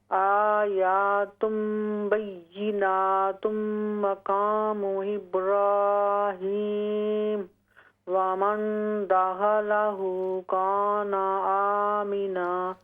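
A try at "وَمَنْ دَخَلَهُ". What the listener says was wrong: ومن خا کو درست کریں، ومن دخلہ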